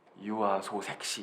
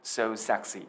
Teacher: 우리 그냥 알파벳 S는 쌍시옷 발음이 나잖아요. 스 이렇게 유아 소 섹시 이렇게 안 하잖아요.